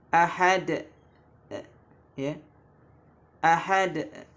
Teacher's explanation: mengakhiri suara qalqalah dengan hamzah